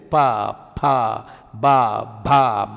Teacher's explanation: ಪ ಅಂತ ಹೇಳಬೇಕಾದರೆ ಎರಡು ತುಟಿಗಳು ಸೇರ್ಬೇಕು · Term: ಓಷ್ಟಿ ಅಕ್ಷರಗಳು